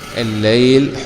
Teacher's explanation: اللام التعريف مدغمة وجوبا، لأنه جاء بعدها حرف لام، واللام من الحروف التي جاءت في أوائل كلمة هذا البيت.